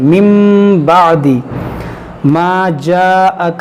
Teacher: کریں گے، یہاں پر میم نون ساکن کے بعد با ہے، یہاں پر اقلاب ہوگا، یعنی نون کو ہم میم پڑھیں گے